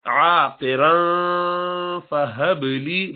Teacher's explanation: با پہ قلقلہ کریں گے، با ساکنہ ہے